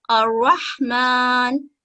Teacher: اگر تشدید والی را کے اوپر فتح ہوگا تو بھی وہ موٹی ہی ادا ہوگی، الرحمن۔ اسی طرح آپ دیکھ رہے ہیں کہ را کے اوپر دمہ ہے، اس را کو بھی ہم موٹا ہی پڑھیں گے، خیر۔